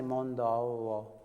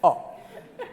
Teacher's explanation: We like to make diphthongs and Italians don't. They just go oh.